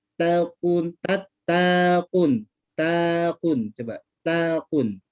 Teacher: taknya dimasukkan ke qaf. Seperti jadi qafnya seperti ada tasdid. Jadi takun, tapi takun, takun, coba takun, bukan Takun.